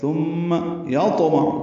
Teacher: عین کو معروف طریقے سے وسط حلق سے ادا کریں گے